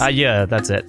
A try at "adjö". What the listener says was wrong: You don't say the D. adjö. So, adjö. Adjö.